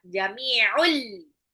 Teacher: Jami'un mimnya adalah mad tabi'i lagi. Un tanwin ketemu lam jadi dilebur aja, idgham bila gunnah